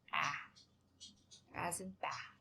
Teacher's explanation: It's a front vowel, but it's a low front, so we're going to have to open our mouth a little bit more, and we say ah, as in bath.